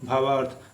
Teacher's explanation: तो देखेंगे फ्रेंड, भाव में अ और अर्थ में अ मिल करके क्या बन गया है, आ बन गया है। तो इसीलिए भाव धन अर्थ भावार्थ हो गया है। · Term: दीर्घ संधि